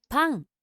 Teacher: the tongue is raising towards the back of the mouth as we say that, and it's trapping the back of the throat